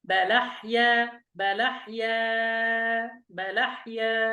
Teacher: يعني سنقرأ هكذا: بلحيا، بلا، يعني سننقل حركة الهمزة هذه إلى اللام التي قبلها ونحذف الهمزة، فتصير بلحيا بحركتين و4 حركات و6 حركات. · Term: naqal